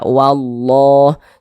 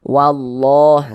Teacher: Nah, huruf lam yang di tengahnya ini, lam jalalahnya ini dibaca tafkhim, dibaca tebal, sehingga dibaca wallah.